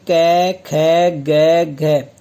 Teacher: वर्ग क ख ग घ न बोलेंगे तो कंठ से आवाज आएगी।